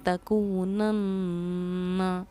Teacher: یہاں پر نون پر کیونکہ تشدید ہے تو ہم نے اس پہ غنہ کیا ہے، ہم نے اس کو پڑھا ہے تکونن.